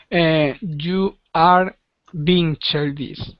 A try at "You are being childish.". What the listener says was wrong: You are being childish. Childish. Childish. So put the emphasis on are. You are. Like that.